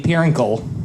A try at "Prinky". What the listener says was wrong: No, there's no L. Prinky?